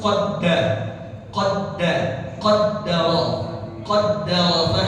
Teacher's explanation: qaddaro dal musyaddadah dal bertasydid jangan diganti pakai ta jadi qaddaro harus qadda qadda qaddaro qaddar Ya, jangan dibaca q dal.